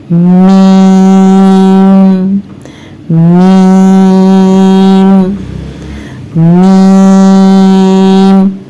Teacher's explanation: اوپر اور نیچے کے دونوں ہونٹوں کو ہم نے ملا لیا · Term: حرف میم